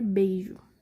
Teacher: ao invés do som subir ele vai descer ou seja ele começa com um som mais forte e termina com som mais fraco · O som, ele desce. Primeiro vem a vogal no ápice, e depois a semivogal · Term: Decrescente